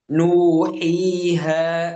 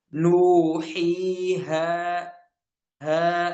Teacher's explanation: Dan ini adalah kesalahan karena huruf mad dia tanpa ikut campurnya khaisyum atau rongga hidung ya, hanya dengan rongga mulut saja